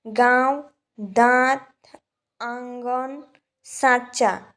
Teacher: जिस धवनी के उच्चारण में हवा नाक और मुंह दोनों से निकलती हैं उसे अनुनासिक कहते हैं